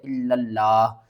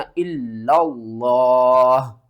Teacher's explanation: لفظ اللہ سے پہلے زبر ہے تو لفظ اللہ کو ہم نے موٹا کر کے پڑھنا ہے۔ 90% لوگ یہاں پر غلطی کرتے ہیں، وہ پڑھتے ہیں الا اللہ۔